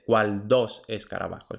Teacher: la D permanece oclusiva porque va justo detrás de una L